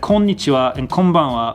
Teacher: konnichiwa and konbanwa both have a wa sound at the end but you don't really pronounce the w really heavily in this almost like you're barely trying to